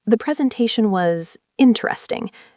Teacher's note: The pause before interesting signals that it wasn't interesting in a good way.